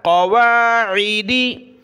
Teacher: قواعدی، قاف کو موٹا کیا، عین کو گلے سے نکالا، قواعدی.